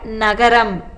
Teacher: மேல்வாய் பல்லின் அடியை நாக்கின் நுனி பொருந்த பிறக்கும்